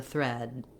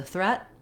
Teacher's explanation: for thread, I held the vowel a little longer, and for threat, the vowel was a little shorter. So that just has to do with voiced sounds have a longer vowel if there's a voiced consonant at the end, and voiceless have a shorter vowel if there's a voiceless consonant at the end.